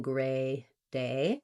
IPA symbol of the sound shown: eɪ